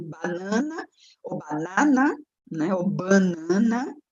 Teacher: dependendo da região, você tem a vogal mais nasalizada ou menos nasalizada